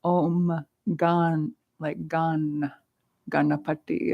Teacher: The M before the following G, instead of saying Gam, Gana, it's just a more natural sound to say Gan, Gana. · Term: Sandhi rule